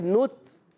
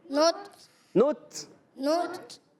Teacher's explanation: نت، نون کو تا سے ملائیں گے. تا شدیدہ محموسہ حرف ہے، سختی کے ساتھ آواز بند ہونے کے بعد پستی نرمی سے سانس جاری ہوتا ہے، آواز آتی ہے نت.